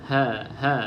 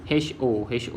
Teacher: Ha ni jangan ditebalkan